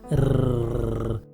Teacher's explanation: हमने वीडियो में प्रश्न किया था कि किसी कंपन जात व्यंजन का उदाहरण बताएं, तो उत्तर है र। र बोलते समय जब जीभ की नोक तालु को छूती है तो इसमें कंपन होता है, जैसे र। उसके बाद उसमें अ स्वर लग जाता है, र।